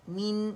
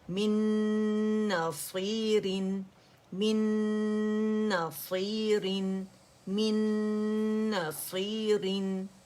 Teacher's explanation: میم کسرہ می ہے, ٹھیک ہے, میں کی آواز نہیں آنی چاہیے